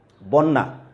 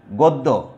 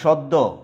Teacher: শব্দের শুরুতে অথবা শব্দের প্রথমে যদি অ থাকে এবং তারপরে যদি জ ফলা থাকে তাহলে আদ্য অ এর উচ্চারণ উকারান্ত বা উকারের মতো হয়